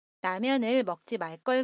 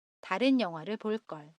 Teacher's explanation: At this time, talk with the intonation of '-(으)ㄹ걸' down.